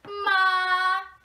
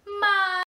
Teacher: it is very important to keep someone's voice even or monotonous so across the whole syllable